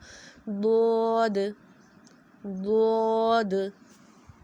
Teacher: زبان کی کروٹ جب اوپر کی 5 دانتوں سے لگتی ہے تو ضاد ادا ہوتا ہے · اب آپ چاہیں تو دائیں جانب لگا لیں، چاہیں تو بائیں جانب لگا لیں، کسی بھی سائڈ سے آپ لگا سکتے ہیں اور ضاد کو ادا کر سکتے ہیں، لیکن اس کی ادائیگی میں بھی یہی آپ نے خیال رکھنا ہے کہ آپ کی زبان کی جڑ اوپر کی طرف اٹھی ہوئی ہو، اور ہماری زبان کا جو سینٹر والا حصہ ہو اس میں ایک گڑھا سا ہو، آواز منہ کے اندر رہے اور ہونٹوں کو گول نہیں کرنا۔